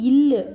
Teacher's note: மேல்வாயை, நாவினது ஓரங்கள் கடித்து தடவுவதால் பிறக்கிறது